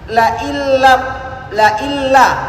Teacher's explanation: la illa itu nggak ada dengungnya karena hidung ditutup. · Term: tanpa dengung